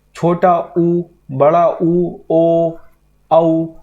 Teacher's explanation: आप इनको बोलेंगे तो जो आपका होंठों का आकार है वो गोल हो जाएगा, इसीलिए उन्हें वर्तुलाकार स्वर भी कहते हैं।